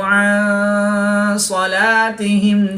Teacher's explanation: نون ساکن کے بعد سواد حروف اخفا میں سے ہے تو یہاں پر اخفا یعنی غنہ زمانی کر کے پڑھیں گے